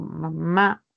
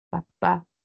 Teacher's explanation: Nuestro labio superior e inferior se unen para producir estos sonidos. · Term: bilabiales